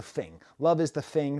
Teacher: the thing that's called th fronting replacing th with f